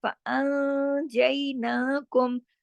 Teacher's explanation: نون ساکن کے بعد جیم ہے نا، اس لیے تھوڑی آواز اخفا میں ناک پہ جاری، تھوڑی باہر رہ رہی، تھوڑا غنہ بھی ہو رہا ہے سیکنڈ لیول کا کاملہ غنہ. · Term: اخفا حقیقی